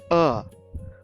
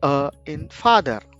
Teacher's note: this sound originates from the very back of the throat. It is the most open foundational sound a human can make. It requires no help from the tongue or the lips.